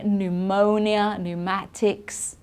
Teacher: we don't pronounce the P there at all